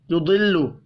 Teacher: ضاد حروف مستعلی ہے, پر پڑھا جائے گا